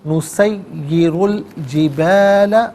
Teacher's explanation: الجبال نسیر میں را پر پیش ہے، اسے الجبال کی لام ساکن کے ساتھ ملائیں گے، درمیان میں سے الف حمزہ کو حذف کیا جائے گا